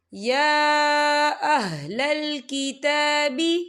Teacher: یا کے پر کھڑی حرکات ہے اور اس پہ چھوٹی سی مد بھی ہے، تو ہم اسے 4 حرکت کے برابر کھینچ کے پڑھیں گے